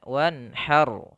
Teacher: Ro-nya juga tebal ya, karena dimatikan. Kemudian nun di sini harus dijelaskan karena dia izhar